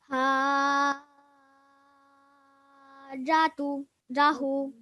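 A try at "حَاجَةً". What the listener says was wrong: Okay, stretch the hu. I think it's because you stretch so long, and then you have to remember that afterwards, wherever we have to elongate, we have to spend the appropriate time to that.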